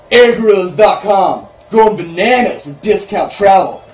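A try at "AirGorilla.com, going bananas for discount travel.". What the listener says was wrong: It's fine, do it again, but remember, it's not a plural, it's AirGorilla.com.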